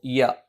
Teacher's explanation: നാവിന്റെ മധ്യഭാഗം മേലെ അണ്ണാക്കിലാണ്